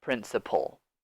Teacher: Be careful with the L sound here. The A. We don't really say it.